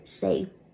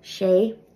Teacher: A broad S in Irish sounds like a regular English S, and a slender S sounds like sh